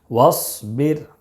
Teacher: واو صاد زبر وص، با را زیر بر، وصبر. را ساکن سے پہلے زیر ہے، اس لیے را کو باریک پڑھیں گے.